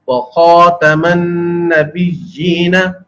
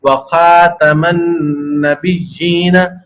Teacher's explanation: خا پر پڑھا جائے گا، موٹا پڑھا جائے گا عربی کے اندر۔ اگر اس کو اردو کے انداز میں پڑھ دیا جائے وَخَاتَمَ النَّبِيِّينَ تو خا کو موٹا نہیں کیا گیا، یہ بھی لینے خفی کی غلطی بنے گی۔